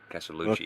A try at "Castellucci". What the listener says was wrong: You gotta get the chi in there. The two C's is the chi. Like Christina Ricci.